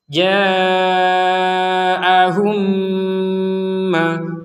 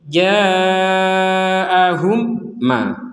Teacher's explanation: Karena sudah dimasukkan kepada mim yang selanjutnya. Jadi mim ketemu mim yang pertama dimasukkan ke mim yang kedua. Berarti sukunnya sudah tidak berlaku.